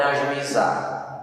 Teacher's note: Se você separar essas sílabas, ajuizar, o U e o I se separaram. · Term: hiato